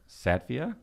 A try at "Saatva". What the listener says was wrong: Well, there's no I at the end. Sattva.